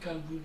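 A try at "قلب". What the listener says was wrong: Qalbun, kalboun. Non, qalb, ça veut dire le cœur. Al-qalb. Et al-kalb, ça veut dire un chien. Donc, vous voyez si vous vous trompez?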